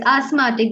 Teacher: the th is not uh not to be uttered not to be pronounced